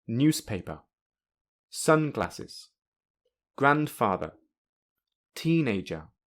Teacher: In this case, the first syllable, which is also the first word, has primary stress. The second syllable, which is the first syllable of the second word, has secondary stress. And the third syllable, which is the second syllable of the second word, has 0 stress.